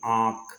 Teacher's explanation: यह जो स्वर होते हैं यह नाक की ध्वनि के साथ साथ बोले जाते हैं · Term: अनुनासिक स्वर